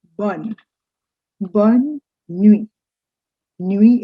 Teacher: you don't say bond nui you just continue as if it were one word